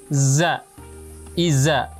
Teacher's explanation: huruf zai dengan merapatkan kedua gigi seri atas dan bawah